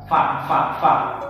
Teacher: Fa itu ini bibir yang bawah itu bertemu dengan ujung gigi yang di atas.